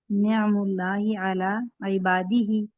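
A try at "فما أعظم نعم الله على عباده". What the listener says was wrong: اس دفعہ ہی کو پڑھا. حرف پچھلی بار ڈراپ کر دیا تھا. ٹھیک ہے.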